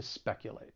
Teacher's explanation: Now, the verb has 3 syllables. The stress is on that first syllable